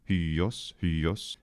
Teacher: in rapid speech, the iota simply becomes a yod, that is a y sound, and which makes sense because it's really it's a diphthong, so we'd expect some sort of a glide.